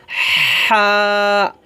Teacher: চিকন করে গলার মাঝখান থেকে চিকন করে বলতে হবে